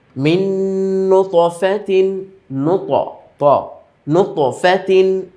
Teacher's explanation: সাকিনের ইদগামের একটি হরফ সেজন্য দুইটা হরফ শব্দ তো আমরা মিলালামই আর দ্বিতীয় নুনের মধ্যে তাসদীদ দিয়ে গুণনার সাথে পড়তে হবে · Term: ইদগামের গুণনা